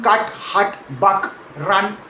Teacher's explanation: The cat vowel is made with the mouth quite wide open and the tongue low and forward almost like you're starting to smile while you say it. The cut vowel is more central, more relaxed, shorter, almost like a lazy unstressed grunt in the middle of the mouth. · The cut vowel is more central, more relaxed, shorter, almost like a lazy, unstressed grunt in the middle of the mouth, and it's actually the single most common vowel sound in all of American English, called the schwa.